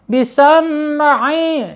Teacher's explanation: Di sini huruf mim jangan sampai menjadi kolkola ya.